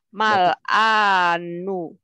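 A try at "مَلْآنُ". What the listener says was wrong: Benar.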